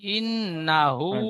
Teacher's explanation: নুন টান হবে না হা টান হবে